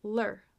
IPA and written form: lɚ (ler)